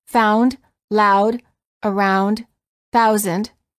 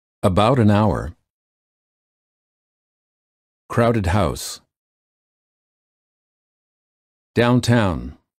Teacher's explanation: the lips begin to close and become more tense the tongue moves from a relaxed low position to a high position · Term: ow as in house